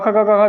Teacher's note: क ख ग घ जो भी है इनका उच्चारण कंठ से किया जाता है